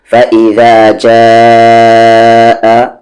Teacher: یہ مد الف پر نہیں ہے بلکہ جیم الف پر ہے، کھینچیں گے 3 سے 4 حرکت کے ایکول